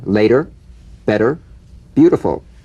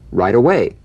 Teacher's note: the medial T becomes a soft d alright it not a complete d but it goes toward addy